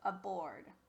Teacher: it changed from a to uh and we call that a schwa because it doesn't sound like it's usual short or long vowel sound